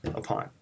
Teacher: at and an onion big word upon upon is an onion it is a light stress followed by a heavy stress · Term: iambic foot